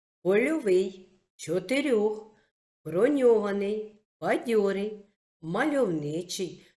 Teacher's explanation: сполучення м'який знак о позначає звук о і м'якість попереднього приголосного його пишуть усередині або в кінці складу польовий чотирьох броньований бадьорий